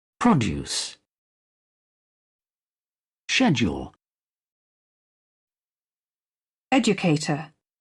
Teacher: The English letter D can be pronounced as the sound J. before the sound U.